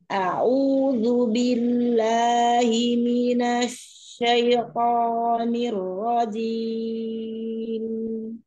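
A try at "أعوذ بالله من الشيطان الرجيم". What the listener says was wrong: Syaiton. Nah, ketika ketemu linnya itu temponya jangan berubah. Samakan juga dengan yang awal-awal.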